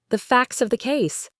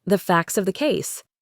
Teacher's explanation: The T is gone. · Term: elision